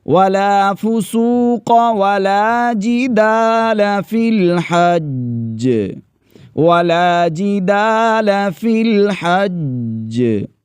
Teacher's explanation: یعنی جیم پر پہلے شد پڑھیں گے اور پھر اس کے بعد آواز کو تھوڑا سا جنبش دیں گے، ہلائیں گے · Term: قلقلہ